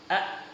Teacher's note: Asyiddah kalau kita praktekkan, ketika huruf hamzah kita sukunkan menjadi a, suara yang mengalir itu tertahan. A, kemudian tidak bisa mengalir.